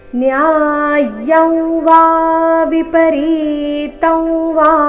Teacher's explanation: ಮೂರನೇ ಚರಣದಲ್ಲಿ 2 ಅನುಸ್ವಾರಗಳಿವೆ. 2 ಅನುಸ್ವಾರಗಳ ಉಚ್ಚಾರಣೆ ನಾಸಿಕಾವ ರೀತಿ ಬರಬೇಕು